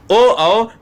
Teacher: ओ जब बोलते हो तो आपके ओष्ठ भी यानी आपके ओठ गोलाकार हो जाते हैं। इसलिए इसको कंठोस्ट कहा जाता है।